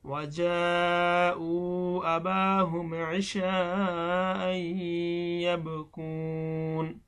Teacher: মাদের হরফের পরে আসলি হামজা আসছে, এজন্য এটাও মধ্যে মুত্তাসিল, 4 আলিফ টান হবে।